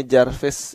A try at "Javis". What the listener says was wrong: Javis gak pakai R, oke. Javis gak pakai R.